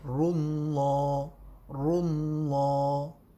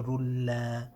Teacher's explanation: Whenever you've got the name of Allah in the Adhan, the Lam will be full mouth.